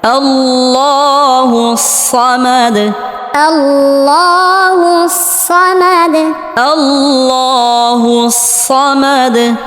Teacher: অনেকেই সদকে সিন বলি আল্লাহু সামাদ বলি এখানে উচ্চারণ হবে সমাদ সদ মোটা করে উচ্চারণ করতে হবে এবং সদ উচ্চারণের সময় বাতাস বের হবে